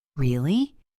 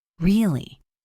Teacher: For example, if you say "really" with a rising intonation, it means you are surprised or asking a question. "Really?" If you say it with a falling intonation, it means you are confirming a fact or expressing agreement.